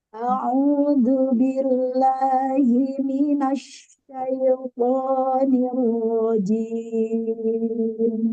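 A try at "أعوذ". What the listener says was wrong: Jadi Hamzah ke Ain ini zaman atau temponya jangan terlalu lama. A'u. Jadi a'u lah. Jangan terlalu lama Hamzahnya.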